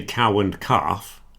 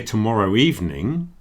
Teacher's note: the W is much stronger when I put it in front of the and sound